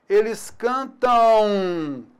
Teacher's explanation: A gente também tem a letra M em final de palavra, e ela pode também produzir o som U